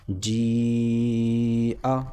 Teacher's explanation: کیوں؟ اس لیے کہ حرف مدہ کے بعد حمزہ اسی کلمے میں آ رہا ہے، لہٰذا یہاں پر مد ہوگا اور 4 الف کے برابر کھینچ کر پڑھا جائے گا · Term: مد متصل